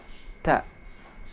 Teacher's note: Cara mengucapkan huruf ta, lidah tidak boleh dikeluarkan. Cara mengucapkan huruf ta ini, ujung lidah menempel di belakang gusi atas. Ta. Jangan sampai lidah dikeluarkan bunyi ta.